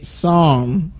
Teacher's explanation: So you don't pronounce the letter P in that word. It should say psalm.